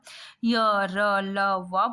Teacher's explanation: इसके उच्चारण में जीभ मुंह के किसी भी भाग को पूरी तरह से स्पर्श नहीं करती है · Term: अंतस व्यंजन